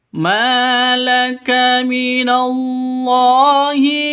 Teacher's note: ma panjang dua ketukan karena ada alif diawali dengan fathah mad asli atau mad thobi'i.